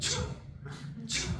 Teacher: So there's no H in it. Now there is a CH, which is aspirated. So it's like cha, like that.